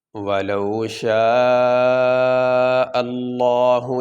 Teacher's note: پیش آ جائے اس لفظ اللہ کو موٹا کیا جاتا ہے۔ یہاں سے یہ زبر آ گئی لفظ اللہ سے پہلے، اس لیے لفظ اللہ کو موٹا کریں گے۔